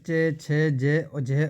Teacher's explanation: च वर्ग वाले हैं दोस्तों वे जो तालव्य से बोले जाते हैं